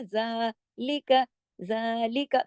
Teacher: जितना दो हरकत हम अलिफ को खींच के पढ़ते हैं ना, जैसे कौ हमने पीछे पढ़ा था, इसी तरह जौ, जाल तो बारीक लफ्ज है ना, जालिका, जालिका, देखें जाल को हमने दो हरकत खींचा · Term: खड़ी जबर